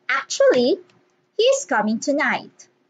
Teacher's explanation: a pattern within a sentence that includes rising intonation followed by a falling intonation in the same sentence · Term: non-final intonation